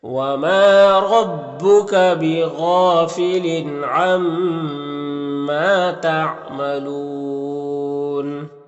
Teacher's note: تعملون یہاں پر وقف کریں گے تو مد عارض وقفی ہوگا، تو اس طرح سے پڑھیں گے۔